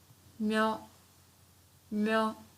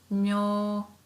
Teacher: Because we have myo plus u, so it's prolonged.